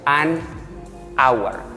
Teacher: Miren que la pronunciación aquí de esta no se pronuncia el sonido de la H, simplemente suena a vocal